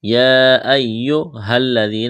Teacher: ہا کو لام کے ساتھ ملانا ہے، ذال کو نرم کرنا ہے